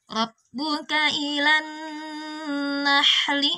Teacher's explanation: ini ada nun tasydid ilan, ada gunnahnya di sana terasa keluar dari rongga hidung kita untuk nun tasydidnya